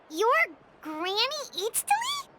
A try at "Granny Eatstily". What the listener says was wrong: Yes, Granny Eatstly. But emphasis on Eatstly, not Granny.